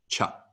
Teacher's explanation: a c is always a ch sound sounded from the center of one's mouth as opposed to right behind one's teeth